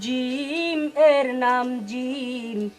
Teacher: জিহিবার মধ্যখান তার বরাবর উপরের, তালুর সাথে লাগিয়ে যার উচ্চারণ করতে হয়